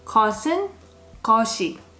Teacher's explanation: So for the subject particles, we're going to add either 이 or 은. Now when you add a particle, you're going to keep the sound of S.